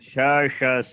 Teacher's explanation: there is no vibration in the throat. The hard consonants are flat. They are very sharp, crisp.